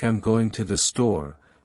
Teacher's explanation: in a statement like I'm going to the store The Voice usually Falls at the end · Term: rising and falling intonation